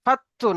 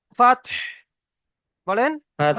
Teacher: ফাত্তু নয়, ফাত্তু নয়, কলকলা নয়, ফাতহ, বলেন, ফাতহ, فتح হা উচ্চারণ করেন